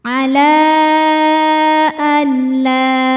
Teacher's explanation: huruf lamnya kita panjangkan boleh 4 boleh 5 harokat. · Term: mad jaiz munfasil